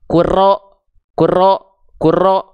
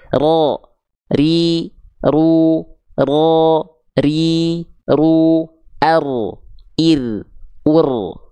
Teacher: getarannya sedikit tapi kedengaran jelas bukan berarti hilang atau bahkan samar-samar atau bahkan terlalu banyak getarannya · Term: takrir